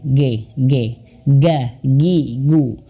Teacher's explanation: halnya kita seperti mengucapkan huruf g latin GG kalau sudah bisa coba kita rasakan lidah belakang pangkal lidah kita itu menyentuh langit-langit